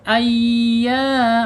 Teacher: Ayya mad thabi'i. Panjangnya dua harakat karena menghadapi alif.